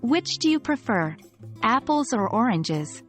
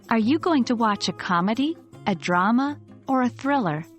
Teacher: focus on the rising intonation on each option, with the highest pitch on the final option to indicate that a choice is expected.